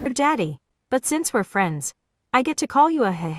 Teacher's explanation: It's like a creepy, breathy whisper, which turns into a creepy, evil laugh.